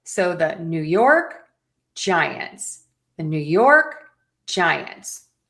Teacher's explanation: So we have stress on York and Ji.